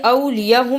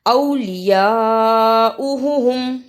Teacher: بڑی مد کو بھی ادا کرنا ہے اور حمزہ پہ پیش ہے